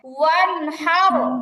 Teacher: গুন্না ছাড়া স্পষ্ট করে পড়তে হবে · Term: ইজহার